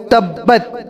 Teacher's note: با کے اندر قلقلہ ہے، تا کے اندر قلقلہ نہیں ہے